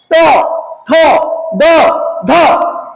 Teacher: आप बोलते समय देखिए उलट रहा होगा जीभ आपका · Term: मुर्धा वर्ण